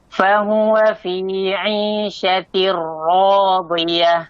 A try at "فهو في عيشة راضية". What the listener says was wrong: Sekali lagi, haknya masih masuk hidung sedikit.